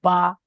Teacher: দুই ঠোঁটের ভিজে অংশ হতে উচ্চারিত হয় 16 নম্বর মাখরাজ বা। এই ভিজে অংশ, যে ভিজে অংশগুলো আছে, ভিতরের অংশটা যেটা ভিজে থাকে, এই দুটো একসঙ্গে মিলিত হয়ে বলে উচ্চারিত হবে বা।